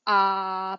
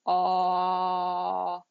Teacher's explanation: if I were to do an ah, but then round my lips, I would have an aw, and it's a different sound